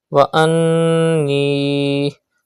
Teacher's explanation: Do gunna in noon mushaddad.